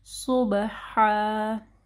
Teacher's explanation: صاد کو ہیوی پڑھنا ہے، با کے اوپر کلکلا ہوگا